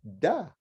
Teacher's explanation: tongue is actually on your gum where it touches your teeth, but it's not on the teeth. It's actually on the gum. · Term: dal